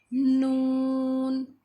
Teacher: زبان کا کنارہ اوپر والے دانتوں کے مسوڑے سے لگے. نون.